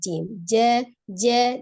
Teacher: tidak ada aliran nafas yang mengalir ya udara yang mengalir ketika mengucapkan huruf j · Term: Jim